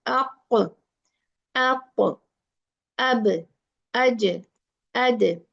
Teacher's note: So don't mix fatha when you are doing qalqala. Keep a watch on yourself. It should be pure sukoon sound.